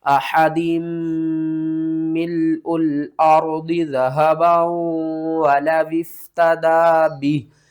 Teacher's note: यहाँ पर इस मीम को आपने छोड़ देना है, हा को दूसरी मीम के साथ मिलाना है, और ये मीम मुशद्दद है तो इसके ऊपर आपने गुन्ना करके पढ़ना है